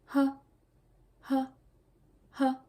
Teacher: Les francophones sont souvent confondus celui-là et le H français, mais il n'est jamais muet en coréen, H. Il n'est jamais muet et on doit toujours clairement prononcer de l'aspiration.